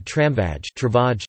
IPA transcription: ˈtraɱvaj